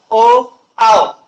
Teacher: कंठातून आवाज निघतो पण ओठांची हालचाल जास्त होते म्हणजे ओठ या अवयवांचा मोठ्या प्रमाणात वापर केला जातो.